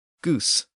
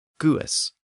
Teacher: So the word is almost identical in English and Frisian, and both have lost the N sound.